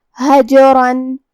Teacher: قلقلہ کا معنی ہے حرف ساکن کو ہلانا لہذا ہم جیم کو ہلاتے ہوئے یہ کلمہ کو پڑھیں گے